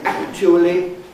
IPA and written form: ˋækʧuəli (actually)